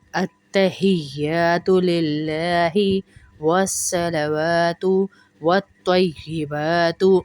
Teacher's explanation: للہ کا لام پتلا ہوگا، موٹا نہیں ہوگا